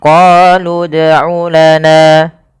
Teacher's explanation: Awalnya misalkan qalu itu panjang, tapi karena bertemu dengan huruf sukun, maka huruf yang panjang tadi menjadi pendek dan kita matikan langsung kepada huruf yang dia berharokat sukun.